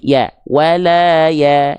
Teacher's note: Ketika fathahnya teman-teman Harus tipis tipiskan ya karena kan vokalnya a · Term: fathah tipis